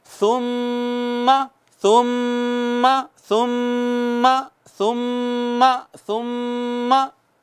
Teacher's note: नाक में आवाज़ ले जाकर, प्योर नाक में आवाज़ ले जाकर, थिक आवाज़, गहरी आवाज़ के साथ एक अलिफ के बराबर गुनगुनाना, इसको गुन्ना कहते हैं।